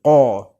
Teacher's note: Qa makhrajnya kat tekak, halkum qa.